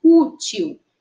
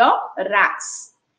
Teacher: nós observamos que a sílaba tônica é a penúltima sílaba. Nesse caso aí de útil, a sílaba formada pela letra U com acento agudo, ó, U.